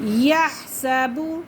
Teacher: ہا کو بالکل حلق سے ہی نکالیں گے